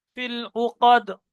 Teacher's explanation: আলিফ বাদ দিয়ে লামকে মিলিয়ে পড়তে হবে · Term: হরফে কমারি